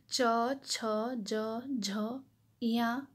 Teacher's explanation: च, छ, ज, झ, या ये जो है तालु से बोली जाती हैं। जो हमारे जीभ का जो है बीच वाला यानी जो मध्य हिस्सा है हमारा वो तालु को टच करती है। तालु जो है ये मुंह के अंदर जो है ऊपर की ओर जो गहरा भाग होता है तो वो तालु है। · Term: च वर्ग